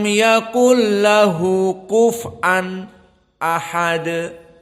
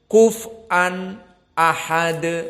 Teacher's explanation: sebelum membaca ahad sakt diputuskan, berhenti sejenak, isti'dadan, persiapan untuk membaca hamzah yang makhrajnya deep, inside, di dalam kerongkongan yang dalam.